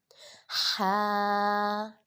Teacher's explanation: حلق کے درمیان والے حصے سے ادا کریں گے اور یہ اس کی ہا کی آواز آئے گی۔